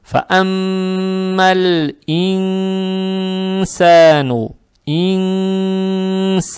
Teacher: нун надо читать скрыто, удерживая через нос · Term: ихфа